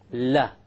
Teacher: the letter lamb or la originates from the front edge not the tip there's a difference the tip means the actual tip of the